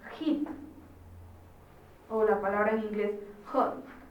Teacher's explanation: acá están iniciando con H, pero es una H aspirada porque el fonema es distinto.